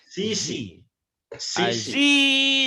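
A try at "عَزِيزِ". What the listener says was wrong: Azizi. Jangan ke S ya. Emang penyakitnya itu ya.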